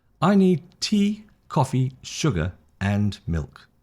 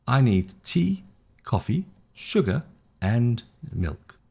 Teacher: Rise, rise, rise, fall. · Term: rising and falling